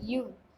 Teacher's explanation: மேல்வாய்ப்பல்லை கீழ் உதடு பொருந்துவதால் பிறப்பவை